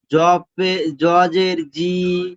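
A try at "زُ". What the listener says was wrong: জের নয়, পেশ বলেছি, উপরে যে হর্ষের মতো পেশ আছে, পেশ। জ পেশ জু।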